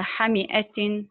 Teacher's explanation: تتابع أربع حركات فساكن، تكونت منه الكلمة، والنبر على حركة الحاء وعلى حركة الهمزة على صيغة مفعل.